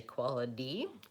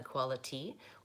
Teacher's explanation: people tend to say quality, with a flap T sound rather than quality, which would be more the British pronunciation